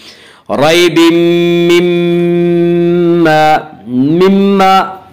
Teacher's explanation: ریب مما میم مشدد ہے، غنہ ہوگا